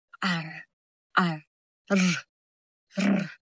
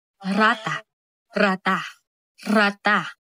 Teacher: At ang panglimang paraan ng artikulasyon ay ang pakatal na ang dila ay tumatalbo o dumadampi sa itaas ng bibig · Halimbawa ay ang R, R, R, R. Mabilis na patalbog ng dila sa ngalangala, gaya ng salitang rata, rata, rata.